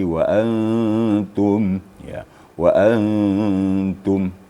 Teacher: disamarkan nun mati ke dalam ta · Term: ikhfa hakiki